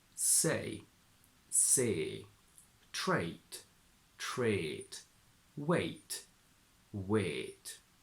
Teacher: But I would say that in other combinations, for example in price and nice, it stays the same. Another very common northern feature is to transform the diphthong a into a single long e.